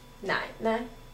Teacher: this second 奶 here 奶奶 is neutral so it falls